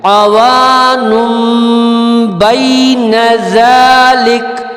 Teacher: ٹھیک ہے, اب یہاں پر اوان ہے, اوانن نہیں پڑھیں گے آپ. یہاں پر نون پہ چھوٹا سا میم آپ کو نظر آ رہا ہے تو نون کو ہم میم ملا کے پڑھیں گے